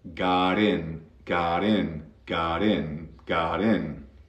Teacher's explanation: because of that T, ¿por qué estoy escuchando una R suave? Porque eso se llama flap T.